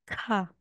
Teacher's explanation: na ito pag may stroke po na isa magiging ka So merong airflow merong parang aspirated po siya letter H ka pag ganito naman po ito parang Kung sa